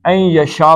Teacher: نون کے بعد یہ آ گئی ہے تو ان یشاء نہیں پڑھنا بلکہ این یشاء پڑھنا